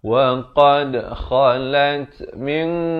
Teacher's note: Ikhfa hakiki dibacakan dengan samar dan tebal kerana qaf merupakan huruf isti'la, dua harakat.